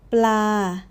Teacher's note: Pla, nice and flat, a mid tone, no rise, no fall.